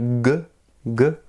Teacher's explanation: Nous faisons vibrer les cordes vocales. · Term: consonne voisée